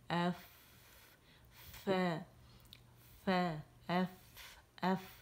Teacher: اوپر کے ثنائے علیہ اس کے سرے جاتے ہیں، نچلے ہونٹ کے پیٹ سے لگتے ہیں تو فا ادا ہوتا ہے